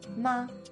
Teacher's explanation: in chinese ma also means mother but only if you say it in the first tone